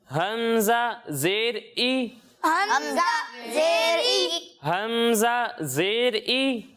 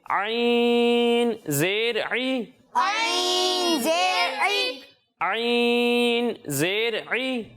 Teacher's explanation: जब हम हमजा की अदायगी करेंगे तो इसे हलक के निचले हिस्से से पढ़ेंगे और जब हम आइन की अदायगी करेंगे तो इसे हलक के दरमियाने हिस्से से पढ़ेंगे